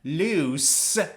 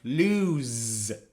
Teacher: The first one is pronounced loose with the sound s. But the second one is pronounced lose with the sound of z.